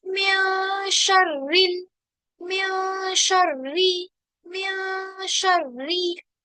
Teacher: रॉ पे कसरा होती है तो हम उसको बिल्कुल बारीक कर देते हैं, यानी जबान को बिल्कुल फ्लैट कर लेते हैं · नून साकिना के बाद हरफ शीन आ रहा है, तो शीन उर्फ इख्फा में से है, तो यहाँ पर हम क्या करेंगे? गुन्ना करेंगे। म्या शर्रिल, सॉरी म्या शर्री, री, और रॉ को मोटा नहीं करना, बिल्कुल भी मोटा नहीं करना है, ठीक है।